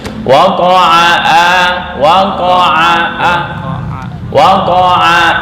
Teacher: ain itu di tengah tenggorokan, nggak masuk ke hidung ya.